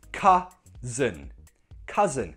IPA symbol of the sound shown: ʌ ə